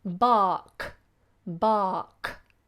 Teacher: if the following letter is a consonant, like the word bark, a dog will bark, then we don't pronounce R at all.